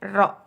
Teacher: Ro itu cara membacanya menyentuh punggung lidah dengan langit-langit. Ro, yaitu di atas langit-langit.